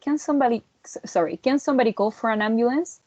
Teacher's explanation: the for and the an would be joined together, like if the word was foran instead of for and an, like two separate words. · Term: linking R